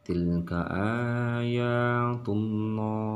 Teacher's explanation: ketika dia menghadapi dhammah ataupun fathah, maka dia cara bacanya adalah dengan penyebutan dengan loh, bukan lah